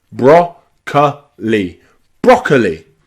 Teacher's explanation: But then there's another O that's not stressed, ka, broccoli. So that second O is a schwa sound